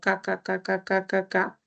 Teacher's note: la C, en este caso, que suena como K, K, K, K, K, K, K, no es una palatal